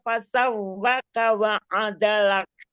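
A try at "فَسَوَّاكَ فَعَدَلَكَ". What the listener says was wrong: Wa-nya matobi'i, terus bukan waw tapi fa. Fasawwaka fa'adalak.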